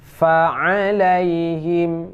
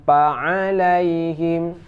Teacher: Fa itu dibaca antara bibir bawah dan gigi atas.